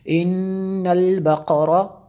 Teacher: ان البقرہ، نون مشدد ہے اس لیے غنہ کیا